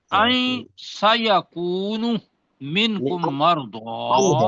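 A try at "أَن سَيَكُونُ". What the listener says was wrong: آئین نہیں ہے پروفیسر، ان سیکون. جب یا ہوگا نا. نہیں آئین اس کو ان پڑھنا ہے، آئین نہیں پڑھنا اس کو. ان سیکون.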